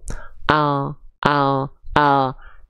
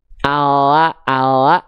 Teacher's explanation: dari samping lidah depan kanan dan samping lidah depan kiri kedua Sisi lidah depan tersebut menyusur sampai ke ujung lidah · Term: huruf lam